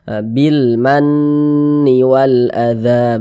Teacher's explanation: Maka alif lam berjumpa dengan huruf mim dan huruf mim termasuk huruf qamariyah, maka ini hukumnya alif lam qamariyah. Maka huruf lamnya dibaca izhar, terbaca dia dengan jelas